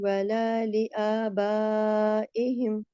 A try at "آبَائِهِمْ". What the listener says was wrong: آبائہم، میں اپنی زیر کو میں ٹھیک کر رہی ہوں آپ کی۔